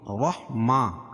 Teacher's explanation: کھڑا زبر قائم مقام الف مدہ کے، اس کو ایک الف کے برابر کھینچ کے پڑھیں گے